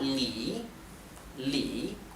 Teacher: hacen referencia a nombres de frutas y se pronuncia Li le con el tono que baja y sube que es el llamado el tercer tono